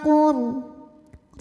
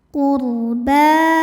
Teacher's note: sukun dibaca secara tafkhim sebab huruf sebelumnya berbaris dammah. Maka huruf qof di huruf ro maksudnya ya kita bunyikan dengan tebal.